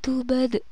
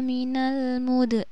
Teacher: Jadi di sini harus ada pantulan ketika membaca bad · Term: qalqalah